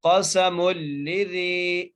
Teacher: قاف کو موٹا کر کے سین کو سیٹی سے، میم کو لام سے ملانا ہے مضبوطی کے ساتھ